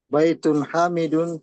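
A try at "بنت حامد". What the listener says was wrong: itu bukan bait bintu bintu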